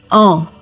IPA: ɑ̃